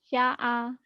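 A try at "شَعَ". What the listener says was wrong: shin. Dari tadi saya dengerin, shin kamu nggak keluar ya?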